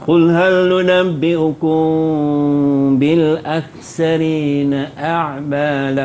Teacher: ikhfa syafawi ni bacaannya mesti dengung dengan kadar 2 harakat. Dan bibir atas bibir bawah agak-agak bersentuh je. Bibir atas dengan bibir bawah, jangan tutup rapat, jangan buka luas.